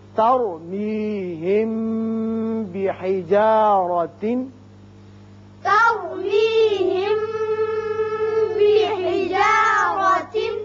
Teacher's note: تر را پر کریں گے اس لیے کہ را ساکن ہے لیکن پہلے زبر ہے